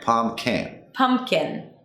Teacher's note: So the P in the middle is not super clear.